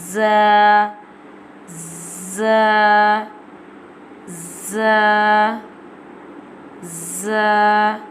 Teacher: Za pronounced from the tip of the tongue touching the inner edge of the top two and bottom two front teeth like this. Za, za, za, za.